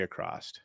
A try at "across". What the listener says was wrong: Did you say across? Across. But it sounded like you said across. With a T. You said across. You said across.